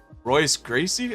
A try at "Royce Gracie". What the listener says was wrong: Hoist Gracie. It's an R, but it's pronounced Hoist.